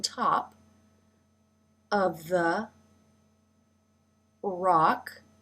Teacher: Teeth come together for the t, and the jaw drops for the ah as in father